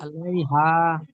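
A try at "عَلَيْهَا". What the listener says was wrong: আলাইহা টান হবে, হা আলিফ মাদ্দা রয়েছে।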